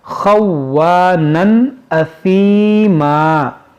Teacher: یہاں پر دیکھیں یہ واو مشدد ہے، اس کو پڑھیں خوانا۔ یہاں تنوین کے بعد حمزہ ہے تو یہاں پر اظہار کریں گے، اور یہ ثا ہے، اس کو ثا پڑھیں، اثیما۔